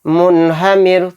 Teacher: تو دیکھیے رائے ساکنہ سے پہلے زیر آ گیا میم کے نیچے تو اس را کو بھی باریک پڑھیں گے